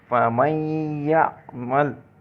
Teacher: تو نون کے بعد یا آ رہا تھا، یرملون میں سے ہے، تو ہم نے اس کو ملا کر ادا کر دیا، یعمل، اور پڑھ لیا، یہ ادغام ہو گیا۔